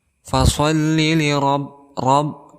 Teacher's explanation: di sini ada huruf ra berharakat fathah, maka kita hukumi sebagai tafkhim, artinya tebal.